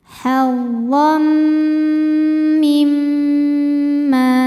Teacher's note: Maka bunyi tanwin ini bukan lagi n, melainkan langsung masuk ke mim. Hazzam disertai bunyi dengung. Jadi bunyi m tahan. · Disebut kamil karena masuknya tanwin ke mim sempurna. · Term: idgham bi gunnah kamil